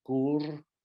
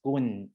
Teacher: final R's were confused with final N because the Old Thai didn't have final R's. So the name for the year of the pig, Gur, were written as Gun in the Old Thai inscription.